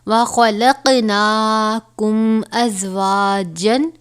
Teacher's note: یہاں پر میم ساکن کے بعد حرف حمزہ آیا ہے تو یہاں پر اظہار شفوی یعنی غنہ نہیں ہوگا